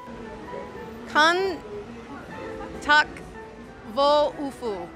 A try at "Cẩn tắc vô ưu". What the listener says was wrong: Ufu, there's no F in there, but that was a good try. It's two U's.